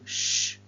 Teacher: the tongue is in contact with an area slightly behind the alveolar ridge and the air is forced through a narrow gap causing friction so shh would be a voiceless post-alveolar fricative and is a